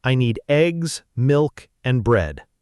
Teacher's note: Notice how eggs and milk rise a little, showing the list is continuing, and bread falls down because it's the last item. That little detail tells the listener, wait, there's more coming until the very last word.